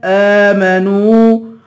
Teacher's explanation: حمزہ پہ کھڑا زبر ہے، اسے ایک الف کے برابر کھینچ کے پڑھیں گے